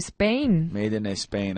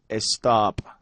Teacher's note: a lot of times with words that start with s Spanish people say estop